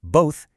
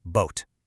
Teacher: if your brain doesn't know how to make the th sound, it might lazily swap it out for a t. So instead of saying both, you end up saying boat.